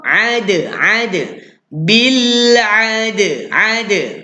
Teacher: Dal di antara huruf yang special Tuan, iaitu huruf lantun. Bila kita sebut huruf dal yang mati ni, dia perlu dilantunkan.